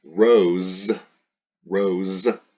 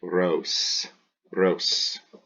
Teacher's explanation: Never make a z sound, so don't vibrate your vocal cords. Go ahead and put your hand lightly on your throat and say an S, not so much vibration in your throat.